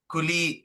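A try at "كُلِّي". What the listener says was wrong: একটু টেনে বলতে হবে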